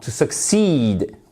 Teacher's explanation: accent tonique sur la seconde syllabe